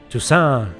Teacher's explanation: clearly putting the stress in the end